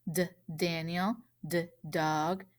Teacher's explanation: i tapped my tongue again and again because i can't stretch this one out this is one of our quick sounds the motion that goes with this sound is you're going to